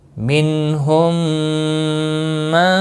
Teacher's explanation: میم ساکن کے بعد دوسرا میم آیا ہے، ادغام شفوی ہوگا، گنہ کے ساتھ پڑھیں گے